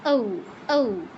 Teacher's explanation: ঔ এর ক্ষেত্রেও ও বলা যাবে না, ঔ, ঔ, দুই পাশে যেন প্রসারিত হয়